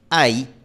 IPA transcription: aj